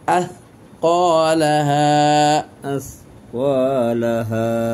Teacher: আথকালাহা মানে সা হবে হালকা, এভাবে যে সিনের সাদৃশ হওয়া চলবে না, বাতাস আসা চলবে না